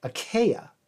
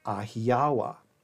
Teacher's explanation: there's no really hard K or C sound, so the closest we can get is an H sound. Hence, the ancient Greek land of Achaea, whence come the Achaeans, would in Luwian be pronounced Ahiawa.